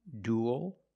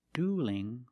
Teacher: duel with a dark L and dueling with a light L because the L is between vowels